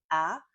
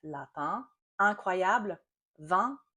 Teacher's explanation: using the back of our tongue to slightly block the back of our throat, and that will trap some of the air in our nose, giving us a nasal vowel